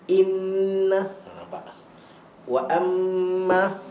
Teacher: dengung dua harakat tapi disertai dengan tekanan penegasan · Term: dengung Akmal